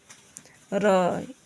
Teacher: व्यंजन ध्वनि के उच्चारण में जीभ की नोक वायु से रगड़ खाकर कंपित करती है, जैसे र, इसको प्राकंपी व्यंजन कहते हैं। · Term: लुंठित व्यंजन